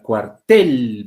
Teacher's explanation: tiene la mayor fuerza de voz en la segunda sílaba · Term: acento prosódico